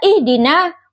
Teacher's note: huruf ha yang makhrajnya itu di tenggorokan tengah. Huruf dal makhrajnya itu di ujung lidah dan gigi seri atas.